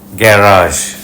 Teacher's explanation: ব্রিটিশরা প্রথম সিলেবলে জোর বেশি দিয়ে থাকে গ্যারাজ ব্রিটিশ প্রোনাউন্সিয়েশন আমেরিকান উচ্চারণে দ্বিতীয় সিলেবেলে জোর পড়ে প্রথম সিলেবলে